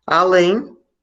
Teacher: além é uma oxítona porque a mais forte vai ser a última